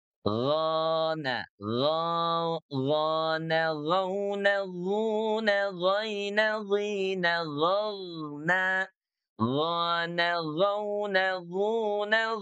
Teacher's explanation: Huruf gain itu keluar dari tekak bahagian atas atau tenggorokan bagian atas ya dengan suara mengalir ya ee yang tebal istilah dan mengalir lembut rakhwa ya. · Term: huruf ghain